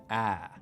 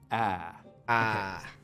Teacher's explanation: what we call the Trap valve is something like ah right we make it with the tongue cupped down low and towards the front of the mouth